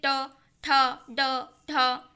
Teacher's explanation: चूंकि मूर्धन्य यानी ऐसे व्यंजन जो कि जिह्वा द्वारा कटक या कठोर ताल से उच्चारित होते हैं